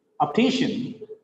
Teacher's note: It is shen, not shian. Shen. Optician.